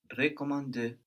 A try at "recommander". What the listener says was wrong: Good, but also the first E is more like je in this case. Recommander.